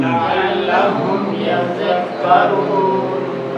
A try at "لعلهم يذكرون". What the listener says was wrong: اچھا, زال کو اس کے صحیح مخرج سے ادا کرنا ہے. زال کو زا کے ساتھ ملانا نہیں ہے. عین کو حلق سے نکالیں, وسط حلق سے. لعلهم يذكرون. یذکرون پڑھیں گے تو غلط ہو جائے گا. زال کا مخرج ہے کیا؟